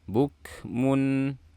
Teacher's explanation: Mun tanwin bertemu dengan ain izhar. Lafalkan gunahnya, jangan lupa gunah yang singkat atau pendek.